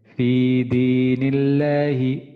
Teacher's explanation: লামের আগে আমাদের আগের হরফ নুন নুনে আমাদের জের আছে সেহেতু এই কারণে এখানে আমাদের লামটা আমাদের পাতলা হবে